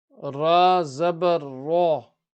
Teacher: Ra full mouth because of the Fatha,